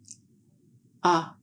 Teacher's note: sound is made with the tongue in a low back position in the mouth. Ah is a voiced sound.